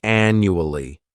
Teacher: This word has 4 syllables, and the stress is on that first syllable